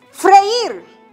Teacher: Porque la vocal cerrada está acentuada. Entonces, entre la vocal E y la I se destruye el diptongo. Entonces, es una palabra aguda.